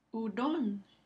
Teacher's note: Es la última sílaba, ron, que recibe el acento prosódico.